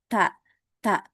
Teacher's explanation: Tapi bedanya kalau huruf ta itu dia mengeluarkan hamas, ya, atau punya sifat hamas, afan. Untuk huruf ta itu dia punya sifat hamas, jadi dia mengeluarkan angin